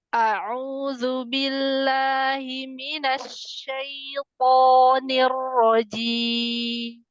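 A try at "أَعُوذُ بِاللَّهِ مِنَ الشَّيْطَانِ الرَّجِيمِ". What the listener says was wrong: Ahsan, cuma di hamzah aja agak sedikit kepanjangan. A'udzu. Zu. Zu.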